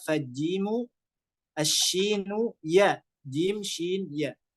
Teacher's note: Jim, shin, ya, kata beliau, kata Imam Ibnu Jazari rahimullah, ini keluarnya dari tengah lidah.